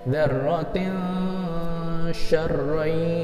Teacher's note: Kemudian dzarratin, tin bertemu sya, ada an, in, un atau nun mati. Ada in ya, in bertemu sya namanya ikhfa. Ini namanya disamar-samarkan, dibaca kayak eng, dan panjangnya 3 harokat